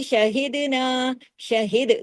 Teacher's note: دال پہ آپ نے کلکلہ کیا، کیوں، دال جزم کے ساتھ ہے